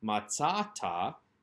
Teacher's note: You can see the penultimate syllable being emphasized in the second verb here on the list, matzata.